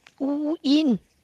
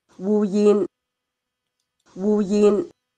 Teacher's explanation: for the Zhongshan variety, then there's no onset, no glide onset. For the standard Cantonese pronunciation, there's the w and there's the y.